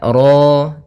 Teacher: pada lafal ro di sini ro tafkhim rnya tebal ya kita namakan dengan ro tafkhim.